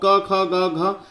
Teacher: जिसमें ऊपर का पीछे गले का वाला हिस्सा कंठ का प्रयोग होता है